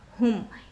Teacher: मीम साकिन के बाद आइन है तो यहाँ पर इज़हार शफ़ी का कायदा और मीम की आवाज़ को ज़ाहिर करेगा